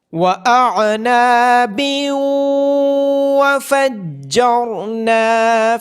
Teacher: تنوین کے بعد حروف یرملون میں سے واو ہونے کی وجہ سے یہاں پہ ادغام ہوگا